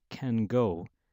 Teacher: the n sound assimilates to the conditioning sound that follows the nasal n becomes more of a the nasal alveolar m